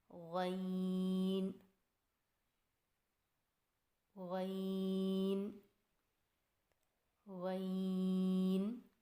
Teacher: عین عین عین۔ غین کی ادائیگی میں زبان کی جڑ کو تالو کی طرف بلند کرتے ہوئے موٹی آواز میں پڑھیں